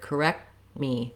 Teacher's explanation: i lift my tongue to the t position but i don't release it i don't say correct with a burst of air but rather · my tongue to the t position but i don't release it i don't say correct with a burst of air but rather correct me so that t never comes out even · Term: stop t